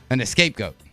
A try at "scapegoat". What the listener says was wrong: You mean escape? Escape? You're throwing an E into the word here that doesn't belong there.